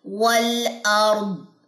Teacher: والارض وقف کرتے ہوئے دعاد کی جو زیر ہے وہ گر جائے گی، دعاد پہ جزم آ جائے گی